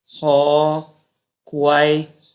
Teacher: 舌根軟腭音，發音時用舌根頂住軟腭，阻擋氣流，令氣流從口腔衝出而成音